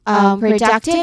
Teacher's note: you'll notice that the stress is on duck. Okay? The third syllable from the end.